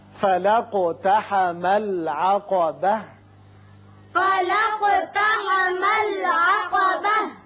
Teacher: اگر آیت کے درمیان ہوتا تو آپ کو ملا کر پڑھنا چاہیے تھا، اور ملانے کی صورت میں تا پر زبر پڑی جائے گی، وقف کی صورت میں تا ساکن ہو کر ہا بن جائے گی